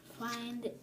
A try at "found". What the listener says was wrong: It's like find. Find would have an I. This one's a little different. Found.